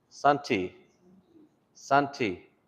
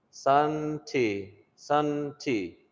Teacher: Sunday becomes Santi, Santi, because we don't have D's, remember? And so we replaced it with a T.